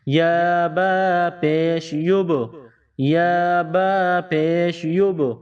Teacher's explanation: یہ 5 حروف جہاں بھی آ جائے ان پر جزم کا نشان ہو، جب یہ 5 حروف ساکن ہو یا جب ان 5 حروف پر وقف کیا جائے تو اسی صورت میں ان پر قلقلہ کیا جائے گا۔ یہاں با ہے، با پر جزم کا نشان ہے، با ساکن ہے تو ہم اس پر قلقلہ کریں گے